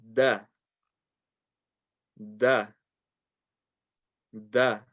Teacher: the dal and the tah have the same tip of the tongue touching between the gums and the teeth so this dal with the tata will become da da